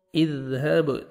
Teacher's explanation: با حروف قلقلہ میں سے ہے، ڈبل ساؤنڈ آئے گا